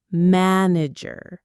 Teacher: Manager has the bright, wide ah sound.